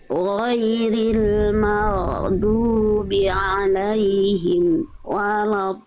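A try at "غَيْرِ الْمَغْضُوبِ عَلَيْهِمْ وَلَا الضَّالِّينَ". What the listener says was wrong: Di alaihim jangan berhenti Bunda. Alaihim walad. Amnya nggak boleh berhenti. Am nggak punya sifat syiddah. Mim itu sifatnya tawasud. Dia amnya jangan berhenti. Terus mengalir sedikit. Ghairil maghdubi alaihim waladdallin.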